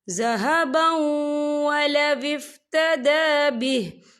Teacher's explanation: تنوین کے بعد جو ہے واو آ رہا ہے، اور واو جو ہے حروف یرملون میں سے ہے تو یہاں پر ادغام ہوگا تو ہم اسے تھوڑا سا غننے کے ساتھ پڑھیں گے۔